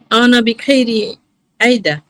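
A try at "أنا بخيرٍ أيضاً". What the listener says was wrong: আনা বিখাইরিন আইদা, খয়রিতে থামার চিহ্ন নাই।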